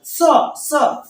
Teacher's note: दंत स, जीभ को दांत से टच, स, जीभ, ये जो नीचे वाला दांत होता है इसको जीभ टच करती है और वहां से उच्चारण।